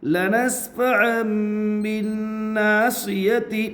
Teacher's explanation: فا کے اوپر زبر ہے، زبر کو جلدی پڑھے، تھوڑا بھی نہ کھینچے۔ عین کے اوپر 2 زبر کی تنوین ہے، تنوین کے بعد با ہے، اس لیے تنوین کو میم سے بدل کر غنہ اور اخفا کے ساتھ پڑھیں گے، اس کو اقلاب کہتے ہیں۔